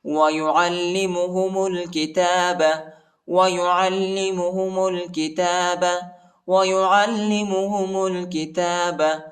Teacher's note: میم کو لام کے ساتھ ملائیں گے، الف نہیں پڑھا جاتا، الف کے اوپر حرکت نہیں